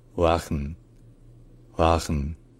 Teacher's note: en néerlandais, le W se lit un peu comme un son intermédiaire entre le V et le ouë.